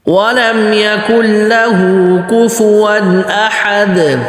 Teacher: پھر آگے کوفون، کوفون احد، کوفو بالکل واضح، آگے ون، کوفون احد، احد حمزہ پتلا، ہا پتلا اور دال پہ قلقلہ کرنا ہے